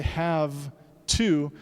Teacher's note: on what's coming before it or after it so in English when you say have two that V changes to an F because of the voiceless T coming up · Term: regressive assimilation